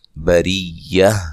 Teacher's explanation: را کو باریک پڑھنا، را کے نیچے زیر ہے، اور وقف کی صورت میں گول تا کو ہائے ساکنہ میں تبدیل کر دیں گے۔